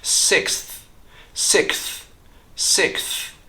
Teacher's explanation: just remove that s sound in the X and put the th sound right after the K